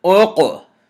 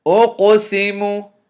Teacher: letting you know that you have to bounce the sound, or you have to do qalqalah.